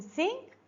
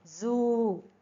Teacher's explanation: vocal cords do not vibrate during the production of S but they are vibrating during the production of Z. So and we know that they are oral sounds.